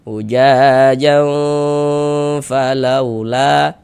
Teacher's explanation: jangan pula dibaca ujajang fa, salah. Fa-nya pendek.